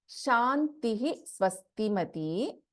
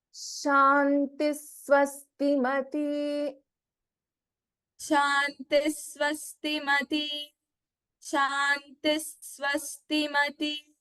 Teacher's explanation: this will be chanted as Shantis Swastimati, not the complete Visarga